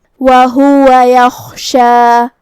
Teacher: خا کی ادائیگی حلق کے اوپر والے حصے سے ہے، خا حروف تفخیم میں سے بھی ہے تو ہمیں اسے بھاری آواز میں پڑھنا ہے، جو کہ اس پہ جزم ہے تو ہم حرف الخا کو ظاہر کریں گے۔